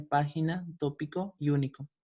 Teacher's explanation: son palabras que tienen la sílaba tónica en la antepenúltima posición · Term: sobr rúculas